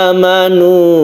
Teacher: mad badal yang dipanjangkan satu Alif disebabkan karena dia itu asalnya adalah sukun Hamzah kemudian